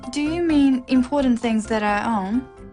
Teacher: it's a yes no question with a rising tone